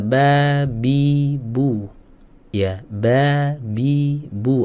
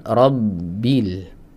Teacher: Ya, jadi nafasnya tidak ngalir, ya. Nafasnya tidak boleh dihembuskan, ya, atau disemburkan keluar saat kita mengucapkan huruf ba. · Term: sifat jahr